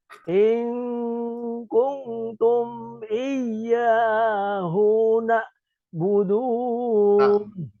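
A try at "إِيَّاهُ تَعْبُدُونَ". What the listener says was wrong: Itu tak, Pak, bukan na.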